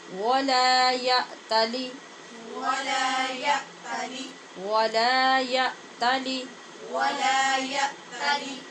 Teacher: یا تالی میں حمزہ پہ جھٹکے سے آواز بند کریں گے اور لام کی زیر کی آواز کو لمبا کر کے یا تالی نہیں بنائیں گے